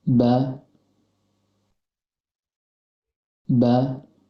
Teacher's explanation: keluar dari tempat pertemuan antara bibir bawah dengan bibir atas dan kondisi lidah dalam keadaan 10 contohnya badai badai wujud badai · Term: hurufba